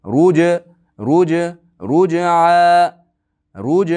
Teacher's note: Jda qalqalasini esdan chiqarmang. Ruj ruj ruj ruj o'qiyman.